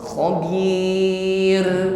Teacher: ringan getaran pada huruf ra yang di akhir ayat